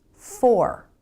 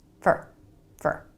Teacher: take for example this word for fully pronounced it's 4 but most of the time in a sentence Americans pronounce it for really fast with the reduced vowel